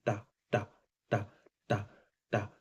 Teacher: और जैसे मुर्दा, मुर्दा में था जहाँ दांत गड़े वो, तो जब आप बोलिएगा टा, टा, टा, टा, टा, तो ये वो आपकी जो जीभ का आगे वाला भाग है वो मूर्धा को टच करता है · ये आपकी जो जीभ का आगे वाला भाग है वो मुर्दा को टच करता है